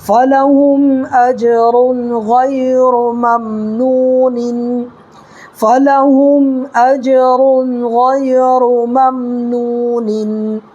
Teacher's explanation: واو ساکن سے پہلے نون پر پیش ہے تو واو مدہ ہوگا، اس کو ایک الف برابر کھینچ کر کے پڑھیں گے